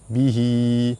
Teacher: Ha dhamir sebelum dia ada huruf yang berbaris. Hukum dia mad silah qasirah. Cara baca dia dibaca panjang dua harakat